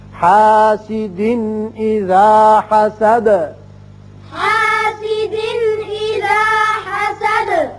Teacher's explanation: حاسد یہاں دو زیر تنوین ہے, نون کی آواز پیدا ہوتی ہے, آگے حمزہ بشکل الف ہے جو کہ حروف حلقی میں سے ہے, لہذا یہاں اظہار ہوگا نون کا. اذا حسد دال ساکن ہو جائے گی, آیت ختم ہوتی ہے تو دال کی صفت قلقلہ حسد کر کے پڑھیں گے